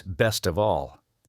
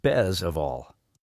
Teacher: And did you notice that the t sound almost disappears sometimes.